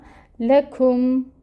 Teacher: لا کے اوپر فتحہ ہے، زبر کی حرکت، اس کو 1 کاؤنٹ پڑھیں گے، لمبا نہیں کرنا، لاکم نہیں کرنا، لکم، ٹھیک ہے۔